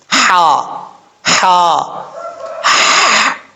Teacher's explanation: ہا بریک ہے اور اس کا مخرج درمیان حلق ہے، لیکن حلق کا وہ حصہ جو منہ کی طرف ہے اس لیے اس کو بریک پڑھا جاتا ہے۔